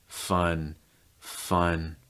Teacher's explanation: So again, key with the schwa, just raising that mid back of your tongue higher, but the very back of your tongue is down, and the front of your tongue is down, and your mouth is super relaxed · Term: schwa sound